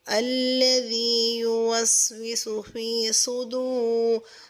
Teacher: الذی یوسوس فی، صاد پہ سو، دال واو پہ دو، سودو، صاد کو پر بھی کریں گے اور سیٹی کی آواز بھی ہوگی ، الذی یوسوس فی صدور، را کو نون کے ساتھ ملا